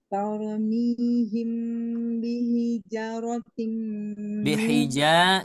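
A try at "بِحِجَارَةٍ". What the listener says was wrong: Janya panjang. Ulangi, bihijaratim.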